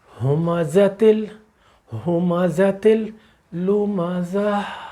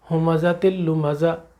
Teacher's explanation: اب آپ نے اسے بدلنا ہے ہا میں، وہی جو ہمزہ میں ہا رہی وہ ہا بدلنا ہے۔ وہ کہاں سے ہا نکلے گی؟ ہمارے حلق سے، یہ حلق کا حرف ہے